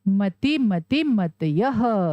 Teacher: और विसर्ग का उच्चारण कैसे होता है? ह की ध्वनि के साथ।